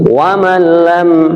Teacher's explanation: non mati bertemu dengan lam, namanya idgham bila hunnah. Maksudnya idgham, suaranya non mati itu langsung kepada lam, bahkan tidak ada suara nunnya, karena seakan-akan lam bertasdid saja.